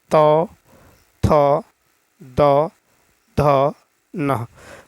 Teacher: अंतर्गत आता है त थ द ध न ठीक है तो दंत से उच्चारित वर्ग है त वर्ग